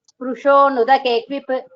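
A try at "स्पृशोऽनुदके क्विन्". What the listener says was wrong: क्विन् क्विप् नास्ति क्विन्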